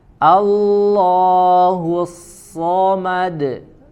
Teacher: huruf shod-nya dibaca tebal termasuk desisan huruf shodnya